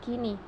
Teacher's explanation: tinggi atas depan tak bundar apabila silabel terbuka atau silabel tak berkoda seperti pada kata kini yang kedua yaitu direalisasikan sebagai bunyi i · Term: fonem I, I tinggi atas depan